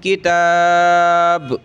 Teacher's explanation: تھوڑا سا جھٹکے کی طرح با کو پڑھ دیں گے جو حروف قلقلہ میں سے ہے